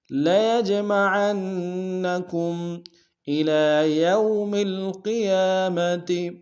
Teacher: جیم عرف قلقلہ سے قلقلہ کریں گے، عین کو نون کے سامنے ملائیں گے، شد ہے زور دیں گے۔ · یو واو لین ہے بغیر کھینچے پڑیں گے